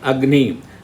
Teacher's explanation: the same word Agni, the first letter A is less stressed. See that Agni, the pressure goes to ni only. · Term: Anudata